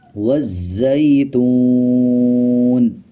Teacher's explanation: اسی طرح آگے دیکھیں واو کے اوپر جزم ہے اور اس سے پچھلے پیش الفاظ کے اوپر پیش ہے، جب واو کے اوپر جزم آ جائے اور پچھلے الفاظ کے اوپر پیش آ رہا ہو تب 1 سیکنڈ کھینچا جاتا ہے